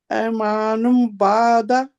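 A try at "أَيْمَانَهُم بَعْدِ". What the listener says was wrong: اے نہیں کرنا، ای ہے، ابھی میں نے بتایا نا ای اس کو کرنا ہے، ای، ہاں یہ زبر ہے، یہ ہے مدلین ہے، ٹھیک ہے، ای، ای پڑھنا،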